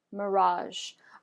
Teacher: you should hear a little or feel rather a vibration at the tip of your tongue from the S in pleasure.